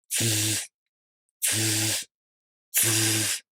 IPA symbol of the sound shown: z